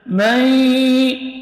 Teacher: memasukkan bunyi nun ke dalam huruf idgham bersama dengan dengung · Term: idgham bi gunnah